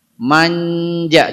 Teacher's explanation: Suara nun seperti tidak berubah. Kenapa? Kedekatan makhraj nun dengan jim. Ya. Jim itu ujung lidah ke langit-langit.